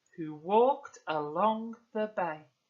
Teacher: we've got iambic trimeter, which means there are 3 stressed syllables